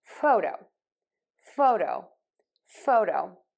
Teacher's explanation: that o and fo sounds longer and stronger than the O and the do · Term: stress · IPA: ˈfoʊˌdoʊ